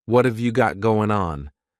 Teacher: what and have are going to be pushed together.